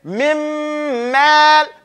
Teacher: we don't even hear the noon. It's completely eaten into the next letter. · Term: complete idgham